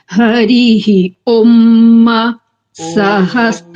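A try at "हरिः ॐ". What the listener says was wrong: মা ওকারটাকে আরো টানতে হবে হরিহি ওম মা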